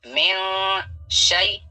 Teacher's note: یہاں پہ نون ساکن کا اخفا ہوگا, نون ساکن کے بعد شین ہے اور شین حروف اخفا میں سے ہے